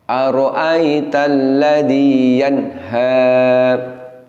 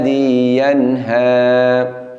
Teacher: nun sukun nya bunyinya harus sambung dengan huruf H